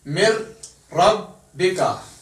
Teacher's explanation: لام اور را ان میں بغیر غنے کے ادغام ہوتا ہے